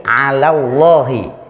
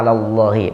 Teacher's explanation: Ya, ala, hati-hati, 'alallahi. Allahnya tebal tapi la-nya tidak boleh tebal. Wa 'alallahi.